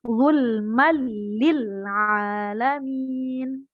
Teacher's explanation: Jadi bacanya tidak boleh didengungkan. Tetap memasukkan suara tanwin tapi tidak dibaca mendengung. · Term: idgham bila gunnah